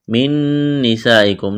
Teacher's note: نون ساکن کے بعد نون ادغام کریں گے، یہاں پر آواز ناک میں چھپائیں گے، غنہ کریں گے، سین میں سیٹی کی آواز پیدا کریں گے، سین کو باریک کرنا ہے، یہ لمبی مد ہے، اس کو کھینچنا ہے 4 الف کے برابر۔